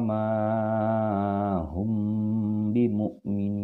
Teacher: jadi kita tahan di kedua bibir kita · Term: Ikhfa Syafawi